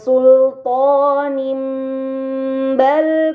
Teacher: Dan terakhir pada kata sultanim bal kuntum terdapat kasrah tain bertemu dengan huruf ba, ini dinamakan dengan iklab, maka kasrah tain tersebut harus dibaca mim dengan gunnah yang dipanjangkan